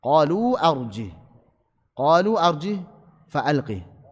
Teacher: Asalnya arjihu. Sebagian riwayat membaca arjihu, sebagian lagi arjihi. Kita membaca arjih disukun.